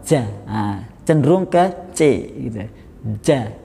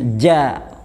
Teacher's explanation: jim itu tempat hurufnya adalah di tengah lidah dengan langit-langit. Jadi bukan di ujung lidah. Kalau di ujung lidah itu biasanya orang-orang Jawa ja, cenderung ke c gitu.